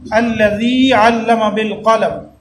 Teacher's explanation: یا مدہ ہے اس لیے ہم ذال کو تھوڑا سا لمبا کر کے پڑھتے ہیں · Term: حروف مدہ